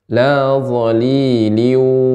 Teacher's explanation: Tanwin dimasukkan ke huruf wau disertai dengan ghunah. Dan gunahnya ini dipanjangkan. lailiu dengan dimonyungkan bibirnya li nah demikian nam ustazil wni minal lahab nam ee tidak lahab namun lahab laoliliwili wala yugni minal lahab Ya, lanjut. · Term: idgam bighunah